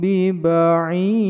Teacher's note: sukun bertemu dengan huruf ba, dipanjangkan dua ketukan, ujungnya kolkolah kubro, dal yang disukunkan di ujung bacaan memantul